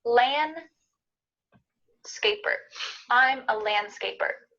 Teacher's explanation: Notice the D here is kind of cut out.